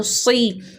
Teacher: زیر پڑھنے میں بھی صاد کی تفخیم برقرار رہنی چاہیے، صاد موٹا ہی پڑھیں گے، صاد زیر سی۔